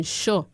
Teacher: la palatal es completamente sorda para los jóvenes